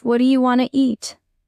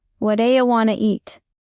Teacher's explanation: dropping or softening the t or d sounds between words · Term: connected speech